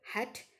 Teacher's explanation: the initial sound in the english word hat is an example of a glottal sound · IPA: [h]